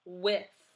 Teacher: It's unvoiced because you do not hear it rumble.